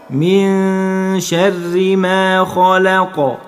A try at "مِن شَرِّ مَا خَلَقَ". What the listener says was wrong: طيب الخاء فتحة خاء، ما تقولش خا لا، الخاء فتحة خاء حرف مفخم دائما، ما ينفعش ان انت تقول خا لا. واللام فتحة لا، ما ينفعش ان انت تقول لا، اللام فتحة لا. والقاف مفتوحة بس انت هتسكنها، نعمل قلقلة. قول خلق. من شر ما خلق.